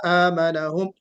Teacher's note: تھوڑا سا غنہ اور کیجئے، جو ادغام ناقص کا غنہ ہے اس کو اور کیجئے